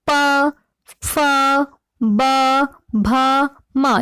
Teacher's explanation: ओष्ठ मतलब होठ। जिन ध्वनियों का उच्चारण दोनों होठों की सहायता से होता है उन्हें ओष्ठ्य कहते हैं